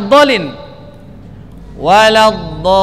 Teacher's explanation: Lamat lazim ini teman-teman harus dibaca 6 harokat.